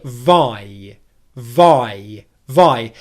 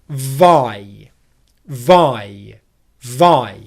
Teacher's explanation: There are two sounds in this diphthong we stress the first: The first part of this diphthong makes up three-quarters of the length, okay. And in terms of length the length of this diphthong is like a long English vowel sound. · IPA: /aɪ/